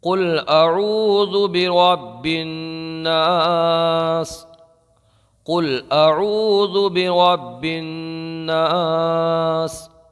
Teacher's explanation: مد عارض کو ایک الف، دو الف، تین الف، یعنی ایک الف کھینچ لیں یا دو الف یا تین الف، اپنی قرات کے مطابق اس کو کھینچ کر کے پڑھیں۔